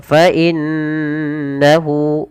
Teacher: cara membacanya yaitu menahan suara nunnya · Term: bacaan gunah